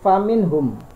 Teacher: huruf n-nya ini dibaca jelas atau tegas, tidak samar, tidak tengung, dan tidak ada kata-kata yang lain. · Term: idhar